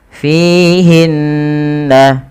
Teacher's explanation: Fihinna, fi mad tabi'i panjangkan 2 harakat pada lafal fi-nya karena ia ada kasrah bertemu dengan ya. Kemudian hinna ada gunnah pada lafal bacaan nun berharakat tasydid